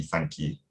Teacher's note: sometimes i have really advanced goose fronting